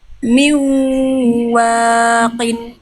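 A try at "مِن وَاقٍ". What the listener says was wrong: Wawunya kepanjangan 2 harokat aja. Miwaqin.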